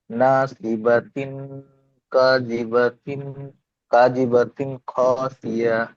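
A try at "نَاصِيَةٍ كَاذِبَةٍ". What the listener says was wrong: দুটো সব বাতিন হয়ে গেল না, একটা ইয়াতিন আছে এখানে না, প্রথমটা ইয়াতিন, আবার গণনা করতে হবে। নাসিয়াতিন কাযিবাতিন খাতিয়াহ। নাসিয়াতিন, এখানে গণনা করতে হবে। নাসিয়াতিন কাযিবাতিন খাতিয়াহ।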